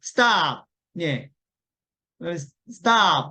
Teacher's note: 그래서 stop은 사실은 이제 stop 두 개의 소리를 발음하면 틀리고 스는 소리가 없기 때문에 약하고 작게 예 그러면 방금도 stop 이러시면 안 되고 stop 거의 스가 좀 많이 안 들리잖아요.